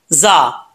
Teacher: जा को पढ़ते वक्त सीटी आएगी अगर सीटी नहीं आएगी तो समझ ले कि जा सही तरीके से नहीं पढ़ा जा रहा ये जा जो है रा के रा की शक्ल में जब